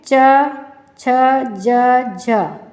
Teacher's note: इसमें हमारी तालु से हमारी जीभ स्पर्श कर रही है। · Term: तालव्या